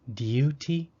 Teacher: some british speakers might try to make a u sound after a d saying duty for me that would take a bit of practice